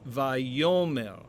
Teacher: with the accent on the penultimate syllable